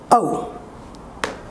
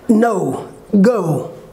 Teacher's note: The glides from a, schwa, to u. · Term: diphthong